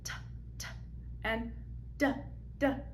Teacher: You'll notice that the tip of the tongue touches right behind the teeth in producing these sounds. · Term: alveolar ridge